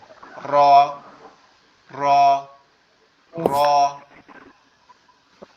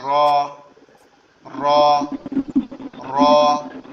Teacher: রটা হচ্ছে জিহ্বার আগার উল্টা পিঠ দিয়ে উচ্চারণ হবে